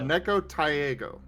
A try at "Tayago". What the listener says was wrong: Less emphasis on the A. Less emphasis on the A.